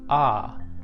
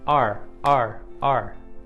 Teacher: in the British Edition the AR sound sounds similar to ah